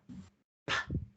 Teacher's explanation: you don't feel your vocal folds vibrating when you put your fingers onto your throat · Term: voiceless sounds